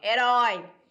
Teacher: ela é oxítona porque a sílaba forte é a última